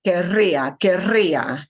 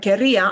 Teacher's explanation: this querría is a strong R and it would have to be said in this particular verb with that double R roll. Otherwise, it sounds like quería, I wanted.